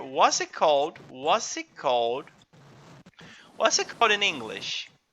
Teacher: So here you can join. There is a z sound in what's it? What's it called? We can kind of drop t sound here.